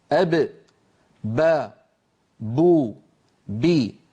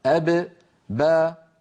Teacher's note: مخرج الباء، فالباء تخرج من الشفتين أب با بو بي بانطباق الشفتين على بعضهما، وللباء صفات سيأتي ذكرها إن شاء الله عند كلامنا على صفات الحروف. · لا عمل للسان أبدا عند نطق الباء لأنها حرف شفوي